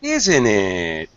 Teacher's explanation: Kind of a drop rise intonation there going on, and it's actually quite normal, isn't it? High then low.